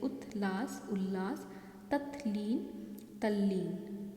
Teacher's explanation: जैसे उज्ज्वल उज्ज्वल बन जाएगा, सतजन सज्जन बन जाएगा। इसी प्रकार यदि त के बाद ल हो तो त भी ल में परिवर्तित हो जाता है